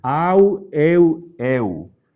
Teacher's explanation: cuando está precedida por alfa epsilon o eta vamos a pronunciar como u castellana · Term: diptongos